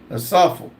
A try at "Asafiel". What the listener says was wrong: E-L, not A-L.